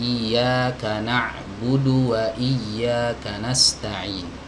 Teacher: Ya, berbeda dengan huruf ain. Huruf ain itu ketika dia disukun karena nutup ya, maka suaranya itu mengalir setengah, udara nggak bisa keluar.